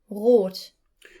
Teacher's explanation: the German R, is pronounced at the back of the throat